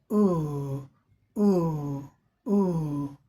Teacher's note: हमारी जीभ जो है तन करके पीछे की तरफ चली जाती है